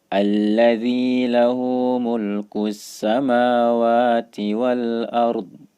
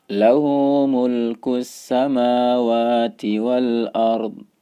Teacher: kalau teman-teman waqaf pada huruf yang diakhiri huruf dha, terutama pada kata al-ard, harus terdengar huruf dha-nya. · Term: suara dha-nya